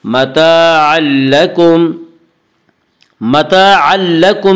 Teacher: متاعا لکم میں ادغام بلا غنہ ہوگا، جسے ادغام تام بھی کہتے ہیں۔ اس کا قاعدہ ہے کہ نون ساکن اور تنوین کے بعد اگر حروف یرملون میں سے کوئی حرف آئے تو وہاں پہ ادغام ہوگا۔